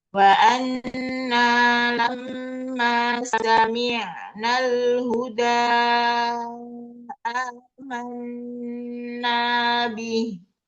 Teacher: Mim dan nun yang bertasydid contoh wa anna, tasydidnya ditahan masuk ke hidung. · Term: nun tasdid atau mim tasdid